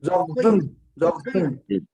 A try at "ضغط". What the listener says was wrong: وغطین ہے وغطین وغطین. تین نہیں طین تین نہیں طین.